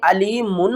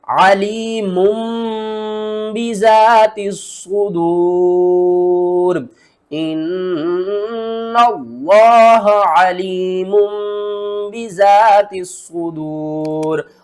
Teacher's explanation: نون کی آواز کو میم کی آواز میں بدل کر پڑھیں گے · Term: اقلاب